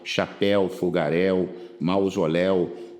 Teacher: Chapéu é o ditongo aberto tônico el no final